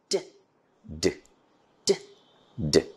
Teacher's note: Lung hair is compressed behind this closure. When the tongue is removed from the alveolar ridge, the air suddenly escapes with force and an explosive sound is produced. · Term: alveolar plosives